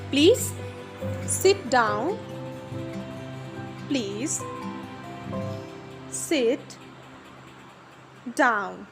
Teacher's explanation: So here down and please are used as a falling tone.